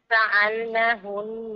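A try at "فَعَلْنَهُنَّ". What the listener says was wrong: Huruf ain tak sepenuh.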